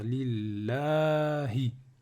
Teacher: Le nom d'Allah, il y a toujours une prolongation qui est prononcée mais pas écrite.